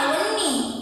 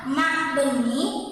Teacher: apabila prefiks ma melekat pada bentuk dasar yang berfonem awal semivokal w pada awal kata dasar berubah menjadi fonem b, sedangkan ma berubah menjadi ma.